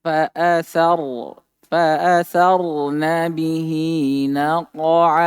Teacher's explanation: Hukum tentang ro di sini ro ditebalkan ya.